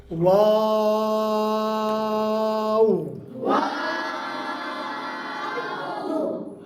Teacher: वाव का मखरज भी मीम की तरह दोनों होंठ हैं, दोनों होंठ वाव का मखरज है, मगर मीम में तो दोनों होंठ मिल जाते हैं, वाव में मिलते नहीं हैं, गोल हो जाते हैं। मुकम्मल गोल ज़बरदस्ती नहीं करना, इसको कहा जाता है नातमाम गोल।